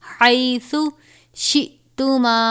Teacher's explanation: سا کو نرمی سے پڑھیں گے اور ہا کو باریک پڑھیں گے. حَيْثُ شِئْتُمَا، حمزہ ساکنہ ہے، یعنی حمزہ اور جزم ایک ساتھ ہو تو حمزہ ساکنہ ہوتا ہے، اور حمزہ ساکنہ ہو تو جھٹکا دے کر پڑھتے ہیں.